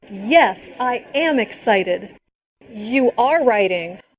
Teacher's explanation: the stress on the verb be when said am and are